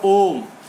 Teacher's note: जब हम ओम करते हैं तो ओम पर बहुत देर तक, ओ पर बहुत देर तक रुकते हैं, तो वहाँ पर भी प्लुत का प्रयोग होता है।